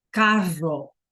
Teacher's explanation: So you can't say caro if you're meaning car, you have to say carro. You have to roll that R.